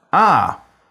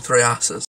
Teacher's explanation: a long Central monophthong